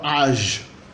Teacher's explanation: O palótica sozinho tem o som similar ao do Ain árabe, é o som da fricativa faringal ou laringal sonora